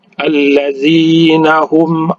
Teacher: izhar di izharkan mim mati bertemu dengan Ain ya jangan didengung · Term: izhar syafawi